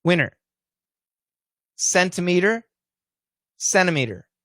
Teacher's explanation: if we say it fast winner centimeter centimeter the t's gone